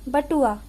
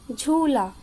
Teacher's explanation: जब हम बड़े ऊ की मात्रा के शब्द का उच्चारण करेंगे तो हमने इसको छोटे ऊ की अपेक्षा थोड़ा देर से बोला